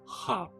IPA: ħa